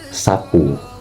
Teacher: Jadi vokal es itu ada pada kata sapu, dan caranya itu dia dibiarkan udara lewat ujung lidah, kemudian nanti setelah udaranya itu dibiarkan lewat akan menghasilkan gesekan. Makanya pada dalam kata sapu itu bisa terjadi seperti itu dalam vokal s, seperti itu.